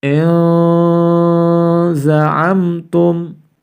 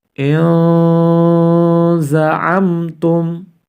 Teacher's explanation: Nun sukunnya harus dibaca samar-samar ya, karena bertemu dengan salah satu huruf ikhfa, zai.